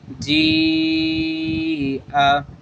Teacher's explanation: مد متصل کی مد لگی، اس کو ہم 2 2.5 الف کی مقدار تک اس کو لمبا کر کے پڑھنا ہے ، ایسے جا، جیم یا زیر جی، حمزہ زبر ا، جی